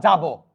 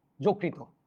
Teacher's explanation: অন্তস্থ জ থাকলে বর্গীয় জ হয়ে যাবে